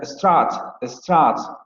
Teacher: la vocal de strut va a ser más anterior con relación al fonema posterior semiabierto no labializado